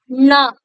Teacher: நுனி நாவினுடைய நுனியானது மேல் அன்னத்துடைய நடு பகுதியை தொடுவதுனாலதான் இந்த நகரமானது பிறக்கும் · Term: 3 சுழி